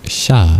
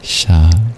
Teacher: Sha, it's palatal, whereas the one with a dot under it is retroflex. You curl your tongue back.